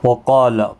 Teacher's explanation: وقال، قاف اور الف دونوں پر پڑے جائیں گے۔ قاف حروف مستعلیہ میں سے ہے، پر پڑا جائے گا۔ جب بھی حروف مستعلیہ کے ساتھ ایک ہی کلمے کے اندر الف آتا ہے، وہ بھی پر پڑا جاتا ہے۔